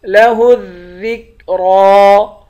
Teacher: ذال کو کاف کے ساتھ ملا کر کاف کو باریک کریں گے، را کو موٹا پڑھیں گے۔ لَهُ الذِّكْرَى، اور را کو ایک الف کی مقدار کھینچ کر پڑھیں گے۔